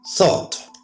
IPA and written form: θɔːt (Thought)